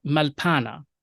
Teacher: we don't really have that that half vowel schwa after the doubled llamath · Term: collapsed one llama